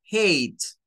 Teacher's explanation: La H, en este caso, la H tiene un sonido como de, aunque para nosotros la H es muda, en el inglés, en algunas palabras, la H es como un jadeo, es como tomar aire. Y esta A tiene un sonido largo, que es A, y por eso se pronuncia como hate.